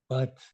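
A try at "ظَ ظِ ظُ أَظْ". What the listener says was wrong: Bob, Bob. lidahnya nggak perlu ditekan, Pak. Bukan bat, tapi hanya sekedar nempel aja. Bob, Bob. Bob.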